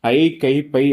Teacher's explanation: ஐ கை பை ஆகிய ஐகார எழுத்துக்கள் தனித்து வரும் இடங்களில் தனக்கு உரிய இரண்டு மாத்திரை அளவிலும் முழுமையாக ஒலிக்கும்